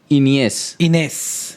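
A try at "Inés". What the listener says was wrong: इनियस नहीं, वो इनियस बोल रहा है, तो फिर वो एक और आई आ रहा है बीच में कहीं पे। वो बढ़ जाता है, बस बड़ी की मात्रा।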